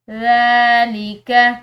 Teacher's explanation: ذال یہ نرم حروف میں سے ہے، اس کے اوپر کھڑی زبر ہے تو اس کو ہم نے ایک الف کی مقدار لمبا پڑھنا ہے۔